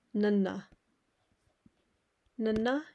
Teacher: you're using the flat tip of your tongue just behind your teeth